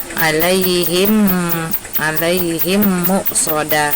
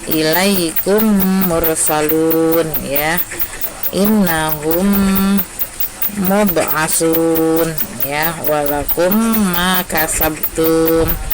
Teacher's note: apabila mim mati bertemu dengan mim. Jadi di sini mim dibaca rangkap dan wajib didengungkan juga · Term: idgham mimi